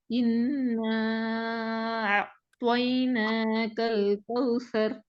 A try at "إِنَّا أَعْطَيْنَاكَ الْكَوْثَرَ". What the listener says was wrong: அதே நேரத்துல ஏட சவுண்டும் தெளிவாக வெளிப்படுத்தப்படணும். இப்ப இதுல ஏட சவுண்ட் வெளிப்படுத்துறது போதாது. இ என்ற சவுண்ட் மாஷாஅல்லா நல்லா அழகா வருது. அதே போல ஏட சவுண்டையும் வெளிப்படுத்தணும். ஏனென்றால் ஏக்கு பின்னால வந்திருக்கிறது ஐன். ஏன்னா எழுத்துக்கு பின்னால வந்திருக்கிறது ஐன். நாங்க சரியாக என்ற சவுண்டை வெளிப்படுத்த இல்லைன்றால் நாங்க அலிஃபை விட்டு போட்டு ஐனை உச்சரித்து ஓதுறதாக மாறிடும்.